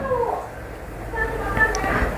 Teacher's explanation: Makhrajnya adalah di bibir kita, yang mana dia tidak merapat sekali antara bibir bawah dan atas. lebih kepada masih ada sedikit rongganya. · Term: huruf fa